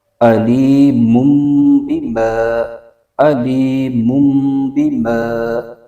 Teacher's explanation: تو میم دو پیش من جو پڑھیں گے تو آخر میں جو نون ساکن کی آواز آتی ہے، تو یہ نون ساکن کی آواز میم سے بدل جائے گی، تو مم بن جائے گا، علی مم۔ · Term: اقلاب